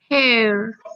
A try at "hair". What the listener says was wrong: Good. we open our mouth, abrimos la boca un poquito más. Hair.